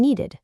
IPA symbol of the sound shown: ɪd